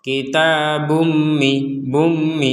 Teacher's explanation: lagi memasuk memasukkan kita akan memasukkan ketika menggabungkan dengan mim kitabumi Jadi dimasukkan kemudian didengungkan jangan sekedar masuk tapi tidak dengung contoh kitabumi bumi jadi ada dengungan tapi sedikit sekali dan itu